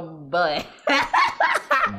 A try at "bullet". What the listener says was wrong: It's a thin word. You fill your mouth up with unnecessary.